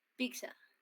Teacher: la I es alta. Entonces, altas pueden ser la I y la U, pero me dice anterior, entonces solamente es la I. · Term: alta y anterior